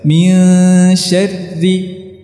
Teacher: Adapun tasydidnya tidak berpengaruh kepada sifatnya, tetap harus ditipiskan min syarri.